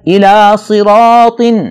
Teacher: را پر زبر ہے، اسے ہم نے موٹا کر کے پڑھنا ہے۔